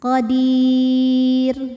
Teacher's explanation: Karena sebelum ra yang dimatikan ada huruf ya sukun, maka ra-nya harus dibaca tipis. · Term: tarqiq